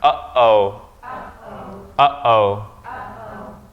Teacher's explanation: it's stopping you're stopping in at the place of your vocal cords you're not saying you're not combining these two vows here and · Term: glottal stop